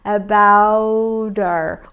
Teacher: Olha só, eu corto o H, eu tenho um about terminado em T, eu vou juntar esse T com o E do her, já que esse H tem som, her, mas eu cortei e vou ficar com about her. Esse T vira um flap T, que é um som de R brando. Remember, about her, como arara, about her.